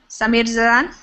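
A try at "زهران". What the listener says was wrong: the H in Arabic is Zahran.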